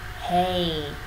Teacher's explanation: Nguyên âm đôi này là nguyên âm kết hợp giữa E và I, thế nên mình cần đọc đủ cả hai nguyên âm.